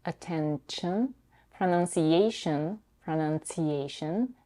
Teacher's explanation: Here we have an intrusive t between the n and the fricative sh.